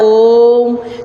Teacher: ओम आप बोलते हैं तो उसमें टाइम लगाते हैं, एकदम से नहीं ओम इस तरह से कोई नहीं बोलता है। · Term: प्लुत स्वर